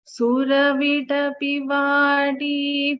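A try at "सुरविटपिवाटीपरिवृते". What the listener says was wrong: Again, Vati. Vati. Vati. I am still hearing a slight D. Vati.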